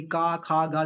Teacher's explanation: यह कंठ वाले हिस्से में आती हैं। यानी क, ख, ग जब आप बोलेंगे तो आपके कंठ से आवाज आएगी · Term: क वर्ग